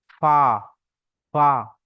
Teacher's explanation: নিচের ঠোটের ভিজ অংশটা উপরের দুটো দাঁতের আগার সঙ্গে লাগবে